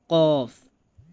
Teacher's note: জিহ্বার গোড়া তার বরাবর উপরের তালুর সঙ্গে লাগাইয়া ২ নোক্তাওয়ালা কফ